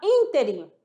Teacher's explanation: na palavra ínterim, sílaba tônica é o in, e não se pronuncia interim